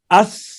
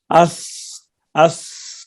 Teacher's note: زبان کی نوک اوپر والے سامنے دانتوں کے اندر کنارے جو مسوڑوں کے ساتھ لگے ہوئے ہیں وہیں پہ لگ رہا ہے